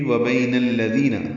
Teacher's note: نون کو الذین کے لام سے ملا دیں گے، دال نرمی سے ادا کریں گے. یہ یا مدہ ہے، 2 حرکات لمبا کریں گے.